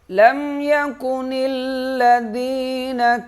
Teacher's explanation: لم پہ غنہ نہیں کریں گے، میم ساکن ہے، یہاں غنہ نہیں کیا جائے گا، اور لام پہ تشدید ہے، نون لام سے سختی کے ساتھ ملے گا، ذال کو نرم پڑھیں گے، یا کو 1 الف کے برابر کھینچیں گے۔